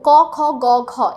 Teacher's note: আমরা মাত্র জেনে এসেছি কণ্ঠ দিয়ে যেগুলো উচ্চারিত হয়, যার গৌণ বাক প্রত্যঙ্গ হচ্ছে কণ্ঠ, ক খ গ ঘ, এগুলো আমরা কণ্ঠ দিয়ে উচ্চারণ করি, যার ফলে জিহ্বামূলের প্রয়োজন হয়